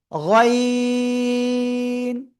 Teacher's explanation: তিন আলিফ টান হবে গলার শেষ ভাগ থেকে